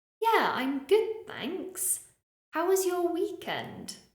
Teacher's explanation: when I was asking a question or giving a positive response my intonation usually was Rising